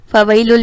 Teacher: فَوَيْلُ، فَوَيْلُ، فَوَيْلُ میں دیکھیں یہاں پر کیا ہو رہا ہے، یا ساکن اور اس سے پہلے کسی حرف پر زبر آ جائے تو کیا ہوتا ہے، یائے لین ہوتا ہے. اور یائے لین کو ہم کھینچ کر نہیں پڑھیں گے